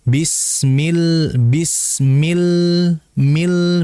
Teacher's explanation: Jangan millah yang betul. Bismill itu keluar dari lidah bukan dari hidung. Sehingga jangan dibaca bisming ming bukan yang betul. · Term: huruf lam